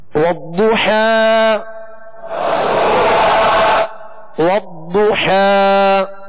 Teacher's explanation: ضاد پر پیش ہے ہونٹوں کو گول کر کے پڑھیں گے اور ضاد کو پر پڑھیں گے اس لیے کہ حروف مستعلیہ میں سے ہے.